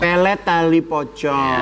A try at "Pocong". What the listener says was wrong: Jangan diganti B, P, pocong.